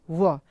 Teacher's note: व का उच्चारण स्थान क्या होता है? तो दांत होता है और ओष्ठ होता है। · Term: दंतोष्